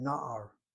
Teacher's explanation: The accent is on the second to last syllable with 2 patachs. First patach, irregular, open syllable, gets accented, the word na'ar.